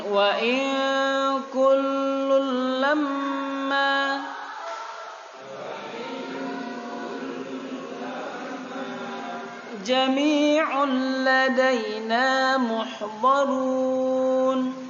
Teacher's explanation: Ikhfa itu disamarkan. Jadi nunnya langsung diarahkan ke kafnya. Dia tidak dibaca jelas nunnya, tapi diarahkan ke kaf. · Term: ikhfa hakiki